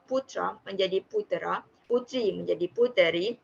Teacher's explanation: Anaptiksis ialah menurut Dewan Bahasa dan Pustaka, anaptiksis ialah penyisifan vokal di antara dua konsonan untuk menyederhanakan struktur kata